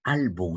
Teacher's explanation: la mayor fuerza de voz. ¿Dónde está? En al. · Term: palabra grave